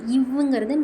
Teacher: மேல்வாய் பல்லை கீழுதடு பொருந்துதலால்